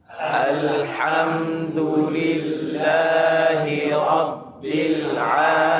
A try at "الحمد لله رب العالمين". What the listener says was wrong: أيوة، عندنا مشكلتين. مشكلة واحدة وهي تفخيم اللام هذه مرققة.